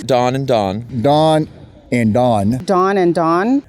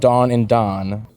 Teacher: all of our informants pronounce Don and Dawn exactly the same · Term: cot-court merger